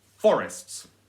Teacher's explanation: is a two syllable word so you can try both ways you can try for the stress on the first syllable